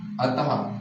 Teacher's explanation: विसर्ग स्वर के बाद यूज होता है इसका उच्चारण हा व्यंजन की तरह होता है